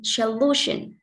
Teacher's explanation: Trọng âm rơi vào lu, vì solution trọng âm đứng trước nó.